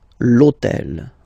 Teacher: in French we don't pronounce H, okay, so basically the first sound of the word is the vowel O